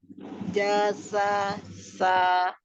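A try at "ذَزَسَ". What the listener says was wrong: Za-nya belum dapat Umi. Za, jazasa.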